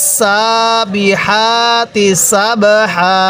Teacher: এই সিনের মধ্যে কিন্তু এক আলিফ টান দিব